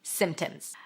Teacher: where there is a sequence of consonants, and in the middle there is a stop sound like a P, in this case, you can drop it. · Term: silent P